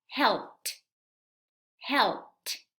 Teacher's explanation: El sonido p no tiene vibración. Entonces, cuando vayamos a agregar la terminación ed, esta ed se va a pronunciar con sonido t